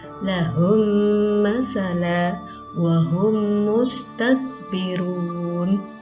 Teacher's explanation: Macam-macam idgham, diantaranya idgham mimi, yaitu apabila terdapat mim sukun bertemu dengan huruf mim yang hidup atau berharokat. Cara membaca bacaan idgham mimi adalah melafalkan mim tersebut secara lengkap atau seperti mentasdidnya.